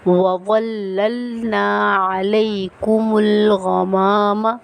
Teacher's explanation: غمامہ، کچھ لوگ پڑھتے ہیں غمامہ، غمامہ نہیں ہے، یہ الف مدہ آ رہا ہے میم کے بعد، تو ہم ایک الف کی مقدار اس کو کھینچ کر پڑھیں گے